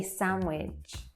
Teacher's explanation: So that D as well disappears altogether in between the N and the W.